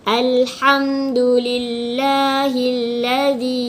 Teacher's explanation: hukum dia mad jaiz, sekurang-kurangnya bacaan dia 4 harakat panjang.